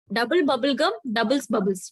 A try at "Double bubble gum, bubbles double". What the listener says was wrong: Double bubble gum. Half the tongue twister was correct, ma'am. Bubbles double is the second part, ma'am.